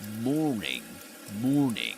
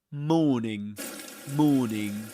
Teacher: the sound R, is not pronounced right before consonant sounds